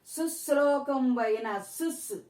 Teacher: సుస్ అనేటప్పుడు దీనికి దీనికి ఊది పలకడం జరుగుతుంది ఊది పలకడం ఎప్పుడైతే ఉందో ఆ ముందున్నది గురువు అవుతుంది